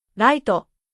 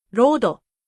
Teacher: The English L and R become the same sound.